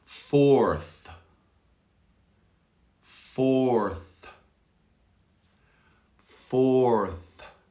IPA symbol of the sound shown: θ